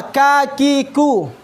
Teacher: Mengalir suaranya, nafasnya mengalir kan? Nah, tapi ini nafasnya mengalir, tapi suaranya tertahan